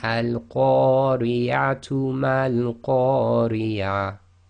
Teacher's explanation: you would read that first ta marbuta with the dhamma, so you'd say tu and then carry on